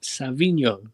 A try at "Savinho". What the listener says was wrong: Savio, there's no Eno in there, fam. It's not. Yeah, don't put Eno in there.